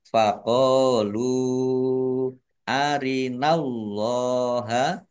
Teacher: Allahnya dibaca tebal karena harokat di depannya fathah. Lam fathah berdiri, mat tobi'i, panjang dua harokat. · karena bertemu dengan huruf alif di kata yang berbeda maka menjadi mad jaiz munfasil dibaca panjang boleh 5 boleh 2 harokat